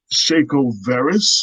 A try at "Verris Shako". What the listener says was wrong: Did I say your name backwards?